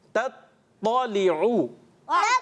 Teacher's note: دیکھیں تا اور تو, پہلے ہم نے تا کی ادائیگی کرنی ہے, پھر تو کو پر کرنا ہے.